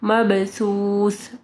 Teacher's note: سا جب آپ پڑھیں گے تو آپ کی زبان کی نوک اوپر کے 2 دانتوں کے پاس آئے گی